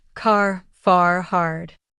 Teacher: in American English, we often pronounce the R clearly at the end of words, while in British English, it may be softer or even silent. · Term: clear R sound